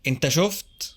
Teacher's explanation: Notice that the long u is shortened.